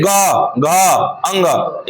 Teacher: ग घ अंग इसमें थोड़ा सा कंपन होगा आपको अंदर से गला फसता हुआ नजर आता होगा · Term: सघोष